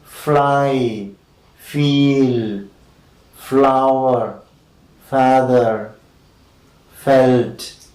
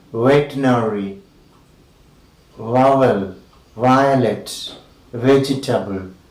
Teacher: The lower lip is against the upper teeth and a narrow gap is formed. Air is let out with friction.